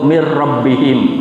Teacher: nun mati berjumpa ro. Bacaan idgham bila ghunah. Tidak boleh didengung ya. Tidak boleh dibaca dengung. Cukup mirrabbihim. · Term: idgham bila gunnah